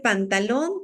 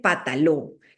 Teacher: por ejemplo en lugar de decir pantalón te dice pataló qué omitió el sonido de la n tanto la que está aquí después de pan y la que está al final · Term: omisión de coda silábica